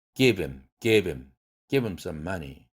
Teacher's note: H 딜리션이라는 것입니다. 예를 들면 he, his, him, her에서 H가 탈락되는데 단 문장의 시작에서 사용될 때에는 탈락되진 않습니다